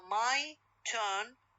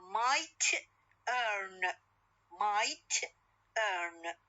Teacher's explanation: t is fully aspirated initial in turn and in the other case is not, being final in might.